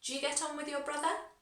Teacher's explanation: Because it's a question, we go up in our intonation at the end.